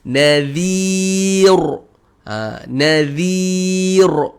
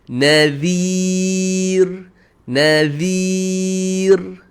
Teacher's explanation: huruf ra ni saya nipiskan sebutan dia